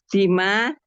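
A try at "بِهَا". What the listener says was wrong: Biha. Tadi biha bukan bima.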